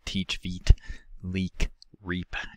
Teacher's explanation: high end of the front uh vowels we have e which can be characterized as a high front tense unrounded vowel · It's articulated by raising the jaw, fronting and raising the tongue, including bracing the tongue against the upper teeth, and also some common articulatory characteristics of all the vowels, such as the velopharyngeal port being closed, so the sound isn't nasal, and phonation in the larynx providing a sound source. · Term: corner vowels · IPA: /i/